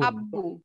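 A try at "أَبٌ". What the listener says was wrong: না না কোনো টান নাই, আবুন।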